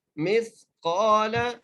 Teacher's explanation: قاف کو ایک الف کی مدار کھینچ کے پڑھیں گے اور قاف کو موٹا کر کے پڑھیں گے